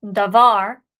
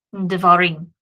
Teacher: it reduces all the way down to that simple vocal schwa, and so it becomes then devarim.